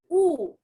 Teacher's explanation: Sedangkan dhammah, U, mulutnya dimajukan, yaitu huruf U.